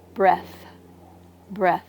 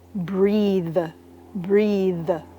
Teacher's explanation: There's a voiceless TH and a voiced TH. The voiceless TH is in the word breath, breath. · The voiceless TH is in the word breath, breath. And the voiced is in the verb breathe, breathe. It's like there's a buzzing sound.